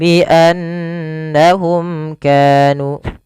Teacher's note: lafal nun berharakat tasydid kita baca dengan bacaan gunnah, memasukkan suara nunnya ke rongga hidung kita dan ditahan. Kesalahannya yang tidak menahan.